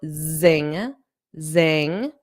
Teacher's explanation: make sure you get that zz, that voiced sound